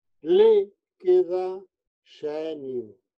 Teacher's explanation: É bom para exercitar o de le fechado, aproxímase do i, e xenio, aproxímase do a.